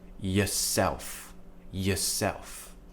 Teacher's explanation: is the weak form of yourself where we would say yeah we use the schwa sound which is where we keep the tongue relaxed in the middle of the mouth and we open the mouth in just a relaxed kind of